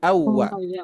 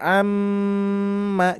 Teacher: dan Nun ketika ada mim bertasdid nah beda kan dibacanya Amma jadi ada gunanya ada dengungannya lebih lama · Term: gunah musyadadah